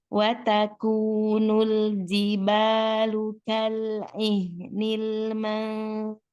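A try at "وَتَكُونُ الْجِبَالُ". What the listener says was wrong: Itu agak bayang-bayang. Jim itu sedah ya. Beda dengan zal yang rowa ya. Jadi dia diperjelas itu. Ji, bukan zi. Jiba. Ji. Ya, hati-hati ya, jangan ke zai, jangan ke zal ya. kalau zal dengan zai itu rawah. Kalau jimnya sedah. Ji.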